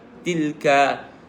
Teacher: Tilka ayat, tilka ka tu istifal, lembut lah. Tilka, dia tak baca tilqa.